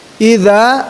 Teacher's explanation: Jadi idza itu digigit lidahnya. Idza, za itu fathah, depannya ada alif madah sebagai pemanjang.